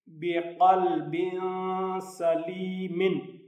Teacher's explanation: با کے نیچے دو زیریں ہیں یعنی تنوین ہے، اس کے بعد سین ہے، اس لیے یہاں اخفا ہوگا